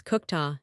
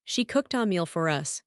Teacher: So ed is t cooked. Next word is a vowel. So the t jumps.